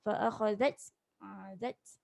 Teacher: matikan ta tu macam ada angin sikit. Zat jangan zaj salah.